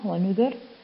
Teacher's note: ذكرت في 6 مواضع في القرآن الكريم، نفس الكلمة اللي قبلها، في حال أني قرأتها وصلا فهي راء مكسورة فترقق بسبب الكسر، ونحيها ونذري. أما في حال وقفت عليها ونذر، ففيها وجهان، الترقيق أو التفخيم والترقيق أولى